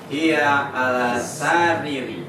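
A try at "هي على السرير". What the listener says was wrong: Sanya pendek. Hiya alas sariri. Iya, riri. Punya panjang.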